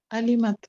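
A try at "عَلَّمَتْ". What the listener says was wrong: allamat. Lam has a shadda. Allamat. Lam has a shadda. All fathas, and then the ta with the sukoon. So that is allamat.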